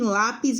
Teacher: em lápis é até paroxítona a penúltima é mais forte